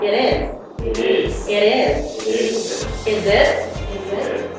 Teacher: when T is in the middle and not stressed, T sounds the quick letter D · So the words end with T sound, it's still consonant sound, followed with a vowel, connect the sound. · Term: consonant to vowel